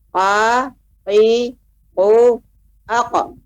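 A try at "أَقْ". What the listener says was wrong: Ya, masih terdengar hamzahnya aku. Ya, ada seperti hamzah.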